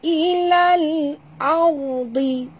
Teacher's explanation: Jangan lantun, jangan baca ilala, ha, tak membaca ilala, kita baca ilal audi. Huruf ra bila dia mati, huruf sebelumnya baris atas, kena baca tebal ya